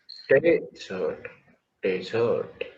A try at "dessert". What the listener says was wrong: No, same sound is coming. So you have to sit on day, not zert. Desert, dessert. And don't pronounce this one. Sometimes this is coming from your mouth. Z. This is not there in English. Desert, desert, dessert. Desert, dessert. Desert. Desert, desert, dessert. Desert, dessert.